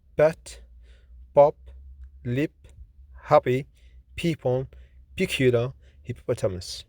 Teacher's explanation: P, which is voiceless, fortis, bilabial, plosive consonant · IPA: /p/